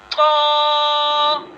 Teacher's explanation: तो का जो मखरज है वो ये होगा कि ज़बान की नोक और ऊपर की दांतों की जड़ से तो अदा होता है।